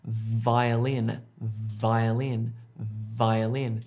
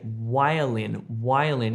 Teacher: you have your top teeth on your bottom lip and you make this humming sound with your throat